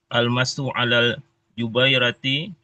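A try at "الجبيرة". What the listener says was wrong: Hei, jabirah, jabirah. Bukan jubairah, jabirah.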